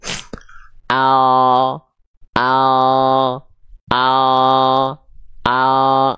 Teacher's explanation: hanya menyentuhkan bagian ujung akhir lidah saja ke langit-langit depan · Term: L alfabet